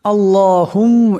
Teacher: আল্লাহুম, এখানে মিম যে মুশাদ্দাদ আছে, এখানে মিম মুশাদ্দাদের এক আলিফ পরিমাণ গুন্না হবে। এই মিম এই কাফকে ধরবে।